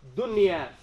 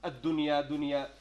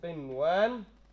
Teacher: This is an odd idhar in which we will pronounce the noon sakina clearly and not merge it.